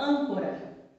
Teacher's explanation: agudo ele tem um som aberto e agora o acento circunflexo e o acento circunflexo ele tem um som fechado